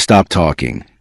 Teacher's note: But inside a sentence such as stop talking, the speaker may hold the P very briefly and move directly into the T of talking. The word remains understandable, but the final sound is not fully released.